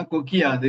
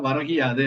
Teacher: நிலைமொழியில குற்றியல் உகரம் இருந்து வருமொழியில் யா வந்தா இந்த உகரம் இகரமாக தெரியும் கொக்கு கூட்டல் யாதுனா கொக்கியாது அப்படின்னு சொல்லவாங்க வரகு கூட்டல் யாதுனா வரகி யாது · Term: குற்றியல் இகரம்